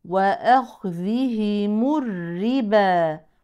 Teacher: الراء مشدده بالكسر ترقق تماما كالرا المكسوره ولا تقسم الى رائين